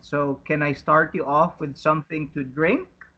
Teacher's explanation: So the intonation or the tone goes up at the end.